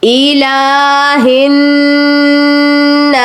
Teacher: ہا جو ہے وہ نون کے ساتھ مل رہا ہے کیونکہ نون مشدد ہے, اس لیے الہ الناس.